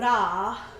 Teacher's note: the ra with the tip of the tongue to the roof of the mouth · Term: rolling of the tongue